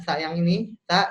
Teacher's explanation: Ta dia sama seperti dza pangkal lidahnya itu di bawah tapi ditiup ya jadi anginnya berasa keluar bukan Getaran yang keluar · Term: tsa